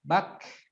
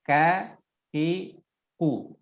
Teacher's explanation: jadi ketika sukun dia ada nafas yang terdengar mengalir. Bak. Tapi ketika berharokat tidak terlalu ya.